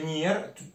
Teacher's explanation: è passati da avenir e poi essendo un verbo molto utilizzato per la solita regola del minimo sforzo si è fatto cadere la V davanti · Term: caduta della V